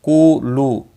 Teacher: قولو دونوں واو مدہ ہیں، ایک ایک الف کے برابر کھینچ کر پڑھیں گے۔